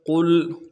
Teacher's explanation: قاف کو موٹا کرنا ہے، لام کے ساتھ ملائیں گے، لام ساکن غنہ نہیں ہوگا.